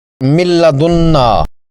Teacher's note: آپ نے غور کیا کہ نون کی آواز بالکل بھی نہیں آئی، یہ حرف حذف ہو جاتا ہے، ایسا سمجھ لیں کہ جیسے نون ہے ہی نہیں۔